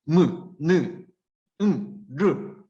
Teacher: 무, 느, 르 이런 놈들은 목청과 코 안을 울려서 나는 소리다. 그래서 얘네는 울림 소리.